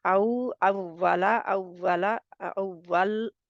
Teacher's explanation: वा गैर मदि कहां से अदा होती है होठों से होटों को गोल करने से